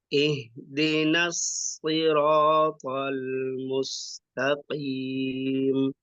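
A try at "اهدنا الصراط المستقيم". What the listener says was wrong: Nah, masih kaku sedikit ya. Pelafalan huruf shad sudah keluar, sofirnya. Mungkin sinnya mus, mus. Nah, harus tipis.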